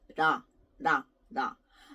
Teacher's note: tongue doesn't touch behind your teeth behind your top teeth and not like R you don't roll your tongue so it's like in between LA and raw